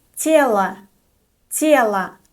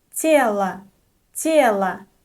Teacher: The unstressed O is pronounced as a.